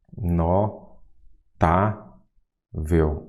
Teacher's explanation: então notável eu já sei que a sílaba tônica é qual a penúltima